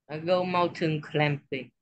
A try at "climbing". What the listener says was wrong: climbing, silent B. Or remember, we don't pronounce letter B. Climbing, not climbing.